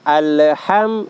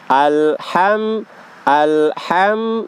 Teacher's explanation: huruf lam itu bukan huruf Qalqalah ya Jadi tidak dipantulkan